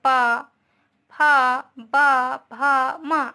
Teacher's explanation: ओठ के द्वारा। हम बोलते हैं तो हमारी ओठ टकराती है ना एक दूसरे से